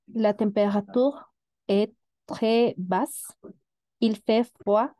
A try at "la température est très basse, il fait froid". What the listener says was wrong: Magnifique, c'est ça. En effet, la température est très basse. Tu l'as bien prononcé.